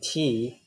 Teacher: The T sound should be pronounced at alveolar. · It's voiceless. Okay, because your vocal cords are not vibrating for this sound.